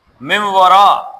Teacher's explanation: واو آ جائے تو مم ورا، من ورا نہیں ہوگا بلکہ میم وارا من ورا، نون کا ناک میں آئے گا لیکن ہونٹ گول ہو جائیں گے۔